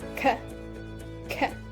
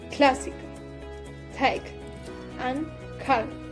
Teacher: the back of the tongue moving towards the soft palate